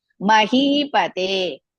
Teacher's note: Second and fourth letters are dirga. Mahi, he is dirga. Te is dirga. Ma and pa are hrisva.